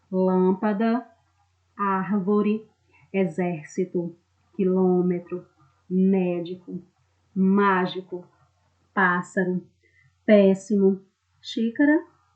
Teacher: as palavras em que a sílaba tônica é a antepenúltima todas as palavras proparoxítonas são acentuadas por isso que eu disse